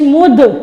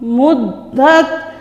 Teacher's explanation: یہاں قلقلہ بھی کرنا ہے کیونکہ دال کو ہم نے پہلے ساکن کیا ہے نا میم کے ساتھ ملاتے وقت، تو لہٰذا یہ حروف قلقلہ میں سے ہیں، اس لیے ہم اس کو ہلا کے پڑھیں گے دال کو